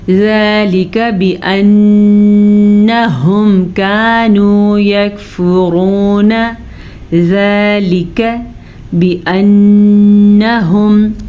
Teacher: نون پہ شد ہے تو نون پہ غنہ ہوگا